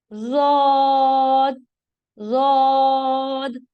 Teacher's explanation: زود، زود. زبان کا موٹا کنارہ آپ کے پاس اوپر کی داڑوں سے لگے گا اس طرح سے، اور زبان کا پچھلا حصہ تالو کی طرف بلند ہوگا تاکہ آواز موٹی ہو جائے.